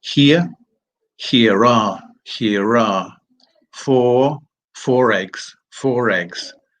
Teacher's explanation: So the R that wasn't there when the word was on its own is now present when it has to join with a word that has another R, that begins with a vowel.